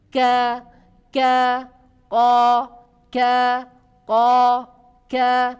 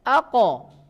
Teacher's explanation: Kalau kaf tipis, tapi kalau qaf tebal.